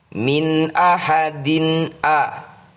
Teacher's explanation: "Nun sukun" diikuti oleh "alif" adalah bacaan dari. Izhar Halqi, harus dibaca dengan jelas tanpa nasalisasi